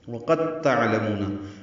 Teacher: اب قاف کو تا سے ملا دیں گے، دال حذف ہو جائے گا، یعنی پڑھنے میں نہیں آئے گا، ادغام ہو گیا۔ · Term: ادغام متجانسین